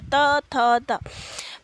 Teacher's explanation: त वर्ग की ध्वनियां जो है दंत्य होती है